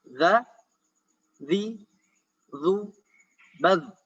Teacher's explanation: Zal, ta, dan dha adalah ujung lidah bertemu dengan ujung gigi seri bagian atas.